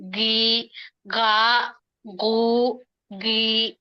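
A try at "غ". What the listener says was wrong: తెలుగులో గ కాదు గ గ మనకు గొంతులో నుండి వచ్చే అక్షరం కాబట్టి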